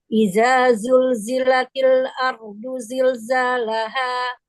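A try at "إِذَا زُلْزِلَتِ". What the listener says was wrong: Idza. Bedakan zal sama zai. Idza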